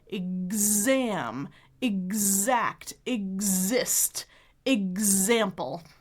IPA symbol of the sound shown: gz